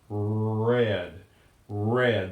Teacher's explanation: the retro flexed R which means that it happens a little bit further back